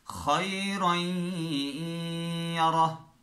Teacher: تو را تنوین ہے، آگے یا آ رہا ہے تو را اور یا کو ہم نے دونوں کو، یعنی تنوین اور یا دونوں کو ہم نے مدغم کر دیا، ملا دیا، ایک یا پڑھ لیا ہم نے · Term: ادغام بالغنہ